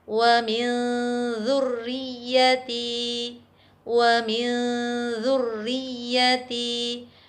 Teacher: Contoh bacaan nun sukun bertemu dengan dzal, wa min dzurriyyati, wa min dzurriyyati. Nun sukun masih tetap terdengar secara samar, kemudian siapkan perangkat bicara kita menuju ke huruf dzal. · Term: ikhfa